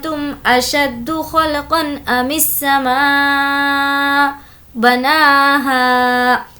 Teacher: نون ساکن کی آواز کو ناک میں چھپائیں گے کیونکہ نون ساکن کے بعد تا ہے جو کہ حروف اخفا میں سے ہے.